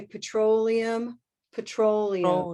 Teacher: so it's a very rounded oh